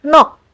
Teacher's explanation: in the combination of these two final consonant sounds, you only pronounce the k sound. Like in the word nok, which means soul.